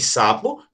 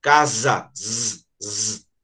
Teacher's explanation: Então, para vocês verem, a mesma letra tem dois fonemas que um é surdo e outro não é. Então, ó, se você fala, ó, de sapo, não mexe cordas vocais. Já quando você fala casa, mexe as cordas vocais.